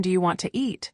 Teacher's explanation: Sometimes sounds are dropped like the t in want to. Other times new sounds appear between words like a soft y sound or a ch sound.